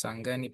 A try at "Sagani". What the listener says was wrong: Sorry, I would like just to correct you. My name is pronounced as Sagani, not Sengani. Sengani is a different name.